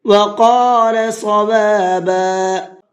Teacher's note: وقالا کے اندر قاف کو بھی پر کر کے پڑھیں گے، صوابا کے صاد کو بھی پر کر کے پڑھیں گے